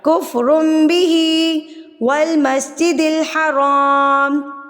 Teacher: बा आ जाएगा का मतलब है बदलना चेंज कर देना बदलना तो अगर तनवीन या नून साकिन के बाद हर्फ बा आ जाएगा तो आपने तनवीन और नून साकिन की साउंड को मीम में बदल देना है